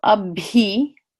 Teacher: you hear the extra puffs of air behind the B so a B and the same thing with the gh sound